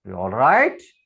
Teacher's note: So right is in a rising intonation.